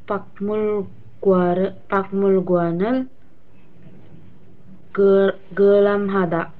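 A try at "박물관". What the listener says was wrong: Bang Mulguan ya, bukan bak. Bang pakai eng ya. Jadi ada giok bertemu dengan miem, maka gioknya itu berubah menjadi eng ya. Bang Mulguan. Jadi bacanya Bang Mulguan, Bang Mulguanel, Kualam Hada.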